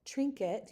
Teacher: because of the movement of the mouth you have the tr sounding a little bit like a ch. You have a nasalization of the i and your final vow can turn into a slight schwa trinket it.